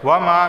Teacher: تأویلی، یا سے پہلے زیر آیا ہے تو اسے 1 الف کے برابر کھینچ کر پڑھا جائے گا۔ وما، میم الف زبر ما 1 الف کے برابر کھینچ کر پڑھا جائے گا